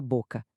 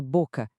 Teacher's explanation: A última palavra é boca. A sílaba tônica é bo.